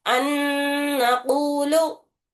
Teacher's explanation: दूसरा जो नून दिख रहा जो मुतहर्रिक है उसे शिद्दत सख्ती से 2 मरतबा अदा करते गुन्ने के साथ। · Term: इदगाम माल गुन्ना